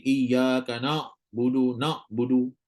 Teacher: membaca dengan suara yang tebal seumpama bunyi huruf Alif Alif yang dibaca dengan tafkim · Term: huruf Ain